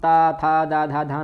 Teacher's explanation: फिर दांतों का जब प्रयोग करते हैं तो हम ता था दा धा धा ना, यहाँ दांतों का प्रयोग होता है, जीभ दांत से टच होती है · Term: दंतीय वर्ण